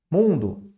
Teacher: Mundo, sílaba tônica é nasal.